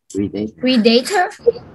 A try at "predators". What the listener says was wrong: It's not how we say it. Look at the phonics. Not predator. Not pre. Pred. Like red. Red, red, red, red, red. Pred. Pred. Predators. Well, actually, we don't say tors. This is the ER phonic. Sounds like ER. Pred. This sound, the A, yeah. Preda. Preda. Predators. Predators. Predators. Predators.